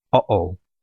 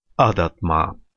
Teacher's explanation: It is the sound you make when you cut off the air in your throat. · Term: glottal stop